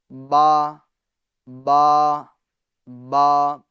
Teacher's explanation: با دونوں ہونٹوں کے تر حصے سے ادا ہوتا ہے، یعنی یہ جو تر حصہ ہے ہونٹ کا، یہ تر حصہ، اور یہ منہ بند کر دیتے ہم تو یہ خشک حصہ کہلاتا ہے، سوکھا حصہ۔